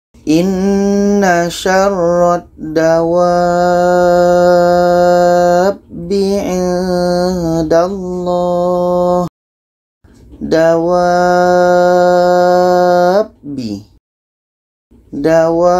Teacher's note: wa ini kita panjangkan 6 harkat baru masuk ke huruf yang ada tasydid